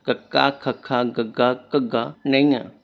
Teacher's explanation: ਜੀਭ ਦਾ ਪਿਛਲਾ ਹਿੱਸਾ ਕੋਮਲ ਤਾਲੂ ਨਾਲ ਲੱਗੇ ਉਹ ਕੰਠੀ ਵਿਅੰਜਨ ਕਹਿੰਦੇ ਹਾਂ। ਜਦੋਂ ਵੀ ਤੁਸੀਂ ਕੰਠੀ ਵਿਅੰਜਨ ਨੂੰ ਬੋਲਣ ਦੀ ਕੋਸ਼ਿਸ਼ ਕਰੋਗੇ ਜੀਭ ਦਾ ਪਿਛਲਾ ਹਿੱਸਾ ਜੋ ਕਿ ਤਾਲੂ ਨਾਲ ਲੱਗੇਗਾ ਉਸ ਨੂੰ ਕੰਠੀ ਵਿਅੰਜਨ ਕਹਿੰਦੇ ਹਨ।